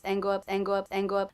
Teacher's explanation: hear the word up I did not release the P sound